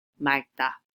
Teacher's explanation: when a verb or adjective ends in 리을기역, that's the L and the G at the bottom, you will hear the L sound as 받침 instead